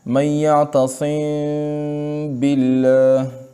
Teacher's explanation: اور اگر میم ساکن کے بعد با ہے تو وہاں غنہ کے ساتھ اخفا ہوگا، اور اس اخفا کا مطلب یہ ہے کہ اس میم کو ادا کرنے کے وقت دونوں ہونٹوں کے خشکی کے حصے کو بہت نرمی کے ساتھ ملا کر غنہ کی صفت کو بقدر ایک الف بڑھا کر خیشوم سے ادا کیا جائے